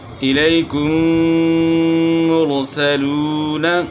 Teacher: الیکم مرسلون. تو یہاں میم ساکن کے بعد دوسرا میم آ گیا تو اس میں جو ہے غنہ ہوگا. اور دوسری بات جو پہلے بتائی تھی کہ میم مشدد میں غنہ ہوتا ہے، تو میم ساکن کے بعد دوسرا میم آ جائے تو وہ مشدد ہی ہوتا ہے، تو اس لیے اس میں غنہ ہوتا ہے.